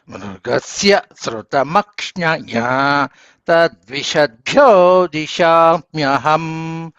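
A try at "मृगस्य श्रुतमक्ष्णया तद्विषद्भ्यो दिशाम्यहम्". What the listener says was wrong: వీళ్ళు మృగా కూడా అనుదాతం చూస్తున్నారండి. అది స్వరితం చెప్పాలి. మృగస్య మృగస్య శ్రుతమక్ష్ణయా తద్విషద్భ్యో దిశామ్యహం.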